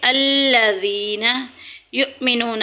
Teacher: زال میں سیٹی نہیں کریں گے۔ الذین یؤمنون، حمزہ ساکن ہے، ہمیشہ جھٹکے سے پڑھی جائے گی۔